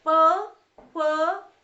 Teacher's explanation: हमारा जो निचला ओष्ठ है वो ऊपर के उससे दंत से क्या कर रहा है, स्पर्श कर रहा है, ठीक है। तो इसको बोलेंगे ओष्ठे।